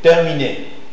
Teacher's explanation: C'est une consonne orale, occlusive, dentale et sourde.